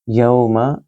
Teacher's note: یو واو لین ہے اس کو لمبا نہیں کریں گے